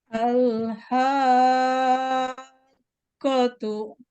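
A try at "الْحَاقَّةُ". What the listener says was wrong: Nah, nabernya sedikit kurang sedikit lagi, Bu. Oh iya, naber itu sebetulnya kalau diartikan agak susah ya. Karena kalau misalkan arti kita diartikan oleh kita itu hentakan gitu ya. Ada hentakan gitu. Nah, tapi kalau misalkan diartikan memang bukan hentakan sih, naber saja.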